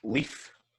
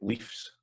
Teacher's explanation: leaf is short, then you've got leaves, and that's just lengthened just a wee slight amount there